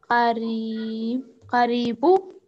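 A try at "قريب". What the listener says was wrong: Karibun, here we have Tanween.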